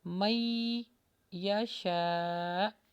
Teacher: stop کریں گے تو حمزہ کے اوپر جزم آ جاتا ہے، تو اس کو جھٹکا دے کے پڑھیں گے